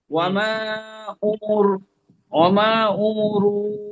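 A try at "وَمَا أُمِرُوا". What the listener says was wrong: ওয়ামা উমরুন, হ্যাঁ, মিম নিচে জের আছে, হামজা পেশ উ, মিম জের মি।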